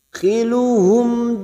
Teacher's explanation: mim sukun bertemu Jim maka dibaca jelas tanpa mendengung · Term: Idhar syafawi